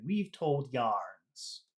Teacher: we'll make weave really big and told a little bit small and then Yarns will make big again